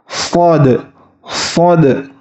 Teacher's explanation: huruf Shad ini cara pengucapannya itu lidah ini mendekati langit-langit hanya disisakan sedikit ruang untuk keluarnya angin